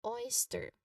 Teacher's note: It starts with a diphthong oi.